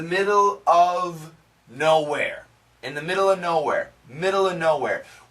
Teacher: We can cancel the V of if the next word after of begins with a consonant. Almost always, not always, but usually we cancel the V.